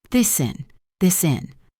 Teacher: The final S sound of this links directly to the in.